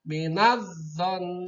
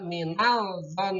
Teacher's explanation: Alif lam mati. Setelah alif lam mati bertemu dengan zo. Maka membacanya alif lamnya tidak boleh jelas. Tidak minal zon. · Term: alif lam syamsiah